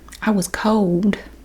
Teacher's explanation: It sounds like there's a W in there because there's a L.